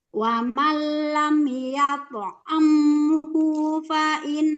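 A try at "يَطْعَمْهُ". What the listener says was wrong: Nggak boleh dipanjangkan.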